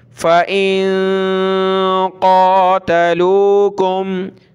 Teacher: नून साकिन है, नाक में आवाज़ पैदा करेंगे , क़ाफ खड़ा ज़बर है, ऊपर खींचेंगे, मोटा करेंगे, फ़ा ज़बर